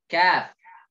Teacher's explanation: Kaf naik sedikit, maju setelah huruf qaf.